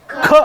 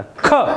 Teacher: ಖ, ಬರೀ ಕ ಅಲ್ಲ, ಖ. ಸ್ವಲ್ಪ ಉಸಿರು ಬಿಟ್ಟು ಹೇಳಬೇಕಾಗ್ತದೆ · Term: ಮಹಾಪ್ರಾಣಾಕ್ಷರ